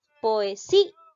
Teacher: ¿Cuál suena más? La I. Por lo tanto, llega a ser hiato acentual.